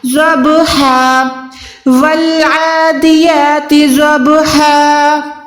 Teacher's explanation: وقف کے ٹائم 2 زبر کو ہم نے 1 زبر کر کے الف کے ساتھ ملا کے پڑھنا ہے، یہ ہو جائے گا ہا الف زبر ہا، ضبحا والعادیات ضبحا۔